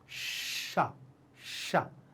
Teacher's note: कैसे तालु से, ध्यान रखना, तालु से उच्चारित कैसा होता है, जब आपकी जीभ जाकर के ऊपर छुप जाए, ऊपर तालु में लग जाए, और आपके मुंह से एक छोटी सी सीटी निकले।